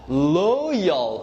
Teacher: the end one is like dark L, which is a little heavy.